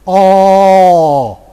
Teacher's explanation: the back vowel, cardinal number 5, would be O, and O with rounded lips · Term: cardinal number 13